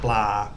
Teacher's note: So the ba blah is a sound sort of between a B and a P, and then it's got the lo ling as part of the cluster, so like BPL. And it finishes with a long R vowel, blah. And because it finishes with a long vowel, it's a live syllable.